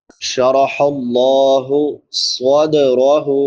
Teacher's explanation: صاد سیٹی والے حروف میں سے ہے اور حروف مستعلیہ میں سے بھی، یعنی موٹے حروف میں سے. اس کو موٹا کر کے بھی پڑھیں گے اور سیٹی کے ساتھ بھی ادا کریں گے.